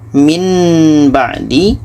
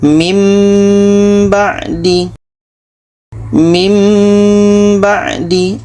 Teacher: 61 ini di sini ada nun mati bertemu ba Ini ikqlab Bunyi Nun ini kita tukar kepada bunyi mim dan di sini kita dengungkan